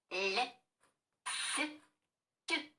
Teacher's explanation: при вимові м'яких звуків губи розтягуються ніби у посмішці а язик притискається двома краями до верхніх зубів